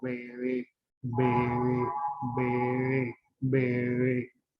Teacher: Fíjense cómo en la primera sílaba, este fonema, que es bilabial, B, B, B, se une, pero en la segunda sílaba los labios no se unen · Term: se fricativiza